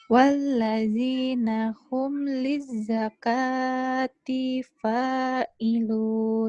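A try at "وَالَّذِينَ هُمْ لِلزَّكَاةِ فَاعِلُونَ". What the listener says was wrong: D-nya pendek lagi. D-nya pendek. Walladzina hum lizzakati fa'ilun.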